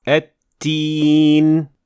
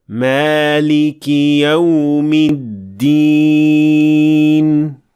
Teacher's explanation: اگر آپ نے دال کا تلفظ کرتے وقت ووکل کارڈز کو لرزش نہیں دی تو آپ بنیادی طور پر تا کا تلفظ کر رہے ہیں